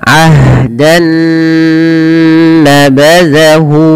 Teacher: Maka di sini awalnya bunyi n, ketemu dengan n yang selanjutnya nun, maka caranya masukkan nun yang pertama kepada nun yang kedua, maka diidghamkan, maka dinamakan dengan idgham bi gunnah. Nah, kemudian ditahan dengan gunnah.